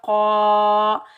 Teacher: क़ाफ़ के ऊपर ज़बर, काफ़ को हम मोटा पढ़ेंगे, क़ाफ़ हरूफ मुस्ताइला में से है, आगे अलिफ खाली से पहले क़ाफ़ के ऊपर ज़बर है, ये अलिफ मद्दा है, इसको हम एक अलिफ की मिकदार खींच कर अदा करेंगे।